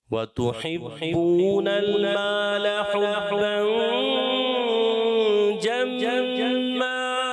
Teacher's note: لام پر زبر ہے پیارے بچے, اس کی حرکت کو کھینچنا نہیں ہے. وَتُحِبُّونَ الْمَالَ حُبًّا جَمًّا.